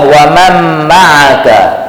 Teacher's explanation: jadi Nun Sakinah Idam kepada mim Terus masuk kepada mim musyaddadah